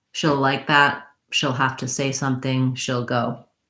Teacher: So our tense E gets reduced to an ill because that she will, that she'll contraction gets contracted and reduced even further.